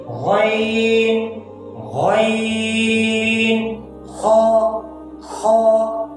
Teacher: अदा होते हैं अदनाए हलक से, अदनाए हलक से, यानी गले के ऊपर वाले हिस्से से जो मुंह की जानिब है, गले के ऊपर वाले हिस्से से जो मुंह की जानिब है।